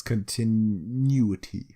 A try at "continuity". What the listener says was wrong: You pronounce it a bit weird because it sounded like you were gonna say continue.